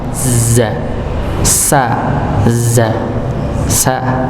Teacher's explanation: kalau Z tempatnya sama seperti Sin ini ujung lidah bertemu dengan gusi bagian bawah Za sa Za sa sama cuma beda Daris si sifat Hurufnya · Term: huruf ZA, zai